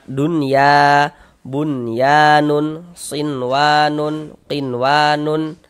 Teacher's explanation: Nah, karena dia izhar maka dibaca jelas. Jadi huruf nun sukunnya kita baca jelas. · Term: izhar mutlak